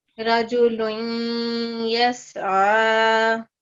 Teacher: इसमें इदगाम नाकिस है क्योंकि नून गुन्ना की आवाज है ना